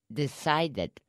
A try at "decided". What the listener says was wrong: Ah, but you see, your tongue's coming out too far. Yes. Your tongue stays in the back. Well, your tongue stays back a little bit and mm-hmm. touches the roof, the top of your mouth. It does not touch the pen.